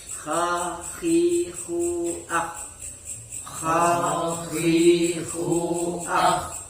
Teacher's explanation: huruf yang menggunakan alat ucap ujung tenggorokan atau tenggorokan bagian atas yaitu kha dengan wain. Kha dengan wain.